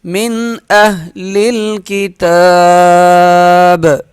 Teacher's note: وقف کی صورت میں با پر قلقلہ ہوگا